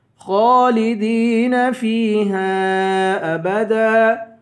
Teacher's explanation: پر پڑھیں گے خالدین فیہا ابدا خا کو پر پڑھیں گے دال کو یا سے ملا کر یا کو ایک الف کی مقدار کھینچ کے پڑھیں گے